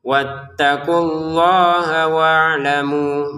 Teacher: Wattaqullaha wa'lamu maka 2 harokat panjangnya karena belum gabung sama hamzah. Kalau digabungin baru panjangnya 5 harokat.